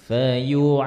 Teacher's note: huruf rokhawah, huruf yang mengalir suaranya, kalau pas dia tasydid itu tetap mengalir ya